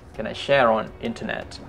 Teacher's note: Share on dibaca tetap R-nya karena dia bertemu O dan O itu vokal atau vowel.